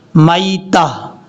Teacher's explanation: یا کو short cut پڑھیں گے کیونکہ یہ یا لین ہے یا مدہ نہیں ہے، اس کو لمبا نہیں کرنا، میتاتو۔ اگر یہاں پہ وقف کرنا چاہتے ہیں تو پھر یہ جو لاسٹ پہ آپ کو تا نظر آ رہی ہے، اس تا کو ہا بنا دیں گے، میتہ، اس طریقے سے۔